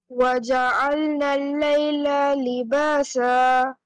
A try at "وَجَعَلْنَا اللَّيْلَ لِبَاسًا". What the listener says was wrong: Is there any standing fatha? Is there any alif madda? Yes or no? Then why are you stretching lam? Again.